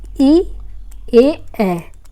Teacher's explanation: अग्र स्वर जो आगे जीभ के आगे से बोला जाता है, जीभ के आगे से जो बोला जाता है वो ये है ई ए।